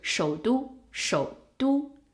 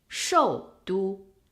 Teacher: Well, it all depends on where you start the character's tone, because a third tone starts at 2. So it starts at a very low position instead of a full fourth tone, which comes from a highest position 5 and goes to 1. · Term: half third tone